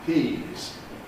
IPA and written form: piːz (peas)